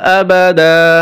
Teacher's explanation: হা এখানে 3 আলিফ টান হবে। আবাদা ওয়াকফ করলে এখানে ওয়াকফ করতে হবে এবং 1 আলিফ টান দিতে হবে।